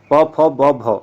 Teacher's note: प वर्ग में ओष्ठ अर्थात दोनों होठों का इसमें प्रयोग करते हैं